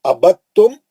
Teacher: ابد تم دال نہیں پڑھیں گے تو تا میں چلے جائیں گے. ابد جب بھی قرآن میں ایسے یہ کلمہ آئیں گا آپ دال پڑھنے کی کوشش نہیں کرنا. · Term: ادغام